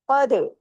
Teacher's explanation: काफ heavy दाल बारीक लेकिन दाल जसम है तो दाल पे कलकला भी होगा · قاف ہیوی، دال باریک، لیکن دال جزم ہے تو دال پہ کلکلا بھی ہوگا. قد.